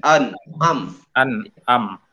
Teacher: Harusnya yang pertama hamzah, an'am. Baru yang keduanya ain.